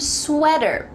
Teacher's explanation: There is a T, but like we talked about in American English, that T is going to change to a D